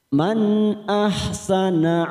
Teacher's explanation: nun sukun bertemu hamzah idhar halqi, kita baca jelas